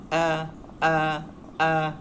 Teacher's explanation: Jadi hamzah hurufnya berada di rongga halkum.